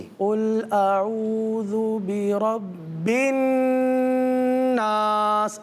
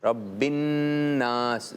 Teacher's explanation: नून पहले बा से मिलकर पढ़ा गया, अब बा में गुन्ना नहीं है, ठीक है। गुन्ना तो नून में ही है।